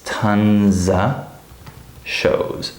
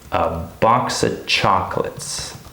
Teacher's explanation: When we say this fast, it's very likely that we native speakers would say it like this: tons of shows. So this word of is not stressed, and it often becomes reduced to just a. So we kind of take off the F sound.